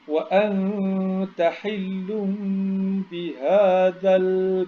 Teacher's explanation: Awak kena baca dengung sebab nun mati bertemu dengan huruf ta yang akan jadi ikfa hakiki.